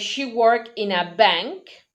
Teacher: the rhythm is in work and Bank